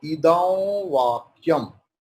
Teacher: Here the anuswara will be wa because vakyam is there. After anuswara there is va.